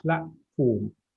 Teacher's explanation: So this T, we don't release that T. Just hold the T within your articulation system, within your throat.